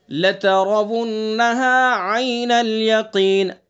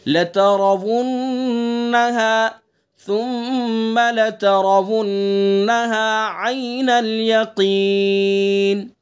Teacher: عین یا زبر آئی معروف. آئی، اے نہیں کریں گے اس کو، آئی پڑھیں گے.